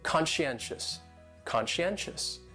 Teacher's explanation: That second syllable is what really confuses people because that SCI almost sounds like you're saying she